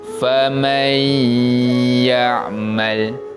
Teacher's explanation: Nampak cara bacaannya, kita memasukkan bunyi bacaan nun mati kepada huruf selepasnya. Huruf selepasnya yang huruf ya, maka mim baris atas tu masuk pada huruf ya dan dibaca dengan bacaan dengung. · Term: idgham bi gunnah